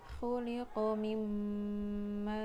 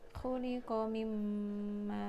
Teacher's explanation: nun mati bertemu dengan huruf mim, jadi nun matinya melebur, tidak dibaca langsung ke mimnya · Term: idgham bi gunnah